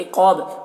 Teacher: قاف کو پر پڑھیں گے اور الف مدہ ہے، ایک الف کے برابر کھینچیں گے